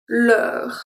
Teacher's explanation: So here the EU is also a closed sound because the R comes after and close it.